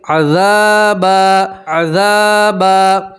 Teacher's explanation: ذال کے ساتھ الف مدہ اس لیے آپ ایک الف کے برابر کھینچیں گے. ٹھیک ہے، 2 زبر کی تنوین کے اوپر آپ وقف کریں گے تو 2 زبر کی تنوین کو ایک زبر اور الف سے پڑھیں گے